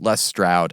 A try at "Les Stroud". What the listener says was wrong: It's Shroud. The T's pronounced as an H.